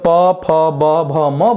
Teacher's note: ये निश्चित रूप से होठ की सहायता से बोला जाएगा। यानी जिस व्यक्ति के पास होठ नहीं होंगे वो प, फ, ब, भ नहीं बोल पाएगा।